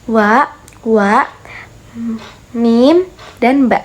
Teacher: kerja sama antara bibir atas dengan bibir bawah merupakan makhraj bunyi